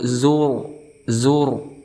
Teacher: Ada ra sukun sebelumnya berharakat dhammah, maka kita hukumi sebagai tafkhim, artinya tebal.